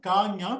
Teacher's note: இப்ப முயற்சியானும் அந்த காவும் ஞாவும் ஒரே முயற்சியால், அதாவது அடிநாவை அடி மேல்வாயை தொடுகின்ற போது காஞா பிறக்கும்